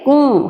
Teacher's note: ہماری آواز ناک میں جا رہی ہے لیکن ہم نے نون کو پراپر ادا نہیں کیا